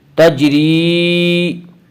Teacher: تجری یا مدہ وہ یا جو ساکن ہو اور اس سے پہلے زیر ہو، یا مدہ کو ایک الف کے برابر کھینچ کر پڑھیں گے